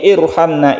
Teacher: Irhamna itu roknya dibaca tebal.